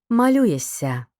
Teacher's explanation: буквосполучення шся передаємо довгим м'яким звуком с